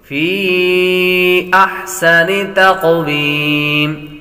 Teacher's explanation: قاف حروف قلقلہ میں سے ہے تو قلقلہ بھی کریں گے. تقویم مد کریں گے تو مد عارض بنے گی.